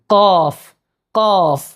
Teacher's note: ഖാഫിൻ്റെ മഖ്റജ് വരുന്നത് നാവിൻ്റെ അങ്ങേയറ്റം മേലെ അണ്ണാക്കിൽ എന്ത് ചെയ്യണം? തട്ടണം.